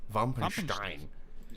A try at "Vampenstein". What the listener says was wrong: No. Vampenstein. Because, like, V is pronounced as F.